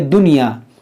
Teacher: یہ حروف یرملون ایک ہی کلمے میں آنے کی وجہ سے یہاں پر ادغام نہیں بلکہ اظہار مطلق ہوگا. نون ساکن کے بعد یا اسی کلمے میں ہے تو یہاں پر اظہار مطلق کا قاعدہ لگے گا، یعنی یہاں پر نون ساکن کی آواز آئے گی. اس کو پڑھیں گے دنیا، اس کو ادغام کر کے نہیں کہ دنیا ایسے نہیں پڑھیں گے.